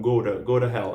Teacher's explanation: como tá entre o som de 2 vogais, eu já falo ra